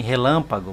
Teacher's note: A sílaba tônica não é a última, nem a penúltima, é a antepenúltima.